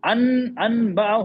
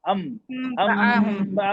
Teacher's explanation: नून की आवाज को मीम में बदल दे रहे हैं